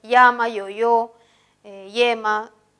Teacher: El yeísmo consiste en también ya no distinguir el sonido ya de llama con el sonido fricativo ya de yoyo.